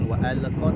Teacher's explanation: berikan hak sifat tawassut dari huruf lam. Alirkan sedikit suaranya. Wa alqat ma fiha, ya.